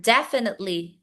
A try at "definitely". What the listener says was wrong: Definitely. Okay, there's no S. No S.